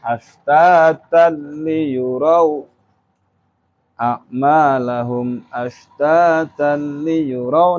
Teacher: tanwin kan ini bertemu dengan lam. Suara tanwin hilang, nun matinya hilang. Gabung masuk kepada huruf lam. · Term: Idgham bila hunah